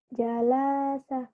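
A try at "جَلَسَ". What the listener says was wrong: Gak ada yang panjang. Kenapa panjang? Gak ada yang panjang.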